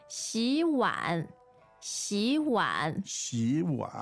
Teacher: So the first third tone becomes almost like a second tone.